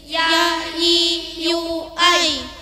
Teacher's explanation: terletak di antara Tengah lidah dan langit-langit atas dibaca dengan ringan dan tidak mendesis.